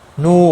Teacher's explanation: نو، واو مدہ ہے، ایک الف کے برابر کھینچ کر پڑھیں گے، اور وقف کی صورت میں نون ساکن بڑھا جائے گا، وقف بالاسکان ہوگا، 3 سے 5 الف کے برابر کھینچ کر وقف کریں گے